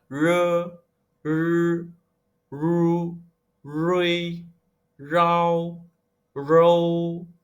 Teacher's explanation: yang R-nya, kita baca tidak digetarkan ya